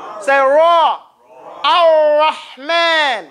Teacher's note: The R or the Ra in Arabic does not touch the teeth. So say Ar. In fact, you don't let it touch anything. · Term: inhiraf